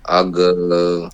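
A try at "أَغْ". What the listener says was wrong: আগ একটু পড়ে যাচ্ছে, একটু চেষ্টা করবেন, আগ আগ্নিয়া, আর যদি পড়ে যায় উচ্চারণ করেন দেখেন কেমন ভেঙে যায়, দেখেন একটা শব্দের মধ্যে আগ্নিয়া, আগ মানে গটা পড়ে গেল, ডাউন হয়ে গেল, আগ আগ না, আবার বলেন তো ভাই আগ আগ এভাবে না, আগ আগ ধরে রাখেন তো, একটু পড়ে যাচ্ছে, পড়তে দেওয়া যাবে না, আগ আগ,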